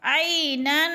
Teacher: یعنی دیکھیں ناک میں آواز جا رہی ہے، چھپا کر لفظ کو پڑھ رہے ہیں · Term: اخفا